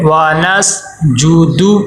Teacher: ونسجد واو کے اوپر زبر ہے، واو لمبا نہ ہو. سین ساکن ہے، سین کے اوپر جزم آ گئی ہے تو یہاں پہ کلکلا نہ ہو. ونس آواز رک جائے.